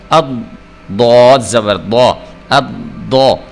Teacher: ضاد کو بھی آپ نے موٹا کر کے پر کر کے پڑھنا ہوتا ہے۔